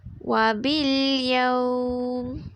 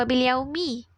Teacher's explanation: Jadi untuk keadaan hukum mad lin, mim tu kita akan baca secara sukun. Kita tak bunyikan mim tu dengan baris bawah.